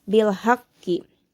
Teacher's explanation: Di sini memiliki hukum tajwid yaitu qalqalah kubro karena terdapat huruf qalqalah yaitu ko yang bertasjid. Sehingga dalam cara bacanya pun harus lebih ditekankan